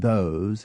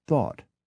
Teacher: we make another unconscious distinction between the hard th of those and the soft one of thought